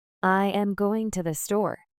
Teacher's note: Your voice starts higher and falls on store.